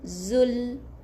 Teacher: Zul dengan bunyi L. Angkat hujung lidah, tekan kepada gigi atas gusi hadapan. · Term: huruf lam yang mati